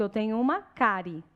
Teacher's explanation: O I é uma semivogal e o E é uma vogal. Semivogal com vogal, 2, ditongo.